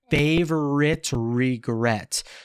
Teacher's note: He fuses those two words together by the R